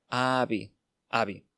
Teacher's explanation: la v de avi suena más suave porque se encuentra entre vocales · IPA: [β]